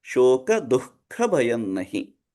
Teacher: Whenever there is a ka or kha after visarga, visarga there are two dots, then we chant it as ahka, ahka, ahka, ahka.